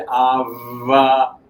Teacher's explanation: if you say ava, there is vibration throughout.